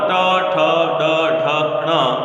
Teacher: टवर्ग ट ठ ड ढ ण और र और षटकोण वाला स जिसको हम मूर्धन्य स कहते हैं, क्योंकि उसका उच्चारण मूर्धा से होता है